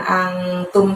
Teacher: Pada saat mengucapkan antum tadi angnya disamarkan ya dan ditahan 2 harokat.